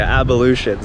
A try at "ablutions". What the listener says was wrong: You added an extra syllable. ablutions. Ablution. You're saying it like abolition.